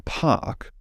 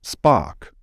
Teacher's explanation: aspirated and unaspirated voiceless stops in English. These will never appear in the same environment.